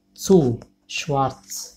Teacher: Za sözün başında ya da ahirinde tsa diýip okulýar.